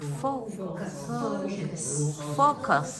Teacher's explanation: in this word, the second syllable is very weak. All the stress is on the first syllable. So it's fo, Focus.